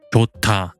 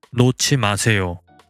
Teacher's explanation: hyut in the coda and the digut in the onset are subject to aspiration and get merged into the onset as its aspirated pair